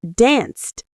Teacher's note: danced ends in a voiceless sound, S, so it's pronounced danced